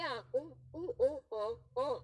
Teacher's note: जिन स्वरों के उच्चारण में जिह्वा का पिछला भाग सक्रिय रहता है उन्हें पश्च स्वर कहते हैं